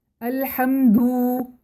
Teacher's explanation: مثلاً الحمد کو الحمدو پڑھیں، ہم نے دال کو مد دے دی ہے، مد کا مطلب کھینچنا ہوتا ہے، تو دال کو ہم نے کھینچ کر پڑھ دیا یعنی کہ واو کا اضافہ کر دیا